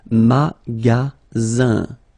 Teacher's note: the ending here is IN, so it's nasal, it goes in your nose, and it's un.